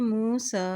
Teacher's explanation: सीन के ऊपर खड़ी ज़बर है तो इसको एक हरकत लंबा अदा करेंगे